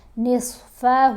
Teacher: واؤ کو نون سے جب ملائیں گے تو اخفا کریں گے، یعنی نون کی آواز کو ناک میں چھپا کر پڑھنا ہے